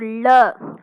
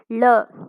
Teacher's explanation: நாவின் இரு பக்கங்கள் தடித்த அதே மாதிரி மேல் அன்னத்தின் நடுப்பகுதியை தொடுவதால் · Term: பொது லகரம்